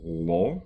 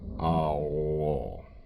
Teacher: In spoken Bulgarian, that L would get a little bit of duration, and it would probably color the preceding vowel a little bit.